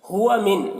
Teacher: نون ساکن کے بعد عین ہے حروف حلقے میں سے تو نون میں اظہار ہوگا، نون کو ظاہر کر کے جلد پڑھیں گے